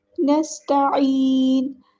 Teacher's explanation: سین کی سیٹی واضح کرنی ہے، حروف صفیریہ میں سے ہے